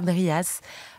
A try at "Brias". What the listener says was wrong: On dit Bria, on dit pas le S.